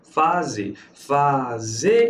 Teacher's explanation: a sílaba tônica é a última. Logo, isso aqui é uma oxítona.